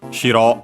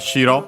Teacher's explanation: By the way, do not confuse it with shiro. That one accented on the first syllable, so high-low, which is the word for white